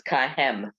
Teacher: They read the hey, the H as a ch, and it's not. It's just a simple H sound. So it's kahem.